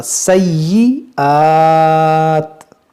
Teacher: یا مشدد ہے، اس کو پڑھیں گے دو بار